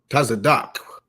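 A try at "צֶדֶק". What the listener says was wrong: You're putting a little too much emphasis. Tazadak.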